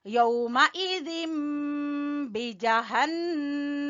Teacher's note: यहाँ पे इकलाब नून की जगह पे यानी तनवीन की जगह पे हमने मीम पढ़ना है